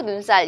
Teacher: 지금 눈곱도 그렇고 눈살도 그렇고 이렇게 된소리가 나죠.